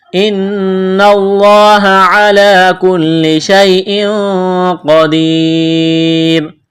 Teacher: نون مشدد پر غنہ کریں گے، آواز ناک میں چھپائیں گے